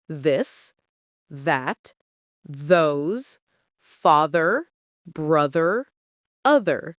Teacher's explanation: Voiced th v. Your throat vibrates.